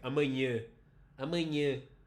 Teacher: You don't actually write nasal over all of the ahs in that word, but they are nasal.